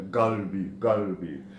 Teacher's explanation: in parts where the desert meet the Levant, you can hear a guttural G sound, galbi.